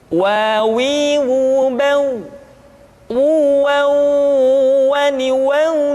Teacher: diucapkan dengan cara memancungkan dua bibir kita